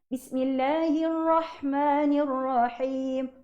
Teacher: Takrir, bergetar. Cuma getaran dia tu tidak boleh melampau-lampau.